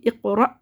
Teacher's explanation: इक़रा इक़रा, देखिए इसमें क़लक़ला होगा, क़ाफ़ साकिन हालत में हुरूफ़ क़लक़ला में से दरमियान में आ रहा है हुरूफ़ के, तो यहाँ पे क़लक़ला सुग़रा होगा यानी छोटा क़लक़ला, और साकिन हमज़ा की आवाज़ मखरज में झटके के साथ रुकी। इक़रा, वक्फ़ी सूरत में पढ़ेंगे इक़रा, दोनों सूरतों में इसमें झटका होगा।